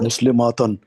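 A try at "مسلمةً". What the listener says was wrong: نہیں، مسلماتن تو کوئی لفظ ہی نہیں ہوتا، مسلمتن، ماں لمبا نہیں کرنا، ماں جب لمبا کرتے ہیں وہ پلورل ہو جاتا ہے۔ مسلمتن،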